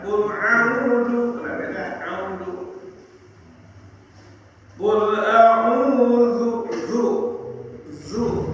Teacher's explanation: Qul a'udzu, nah ini panjang buat angkat ya, disebut mad asli.